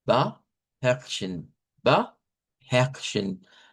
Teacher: Aquí sonaría como una E abierta, R gutural, esas dos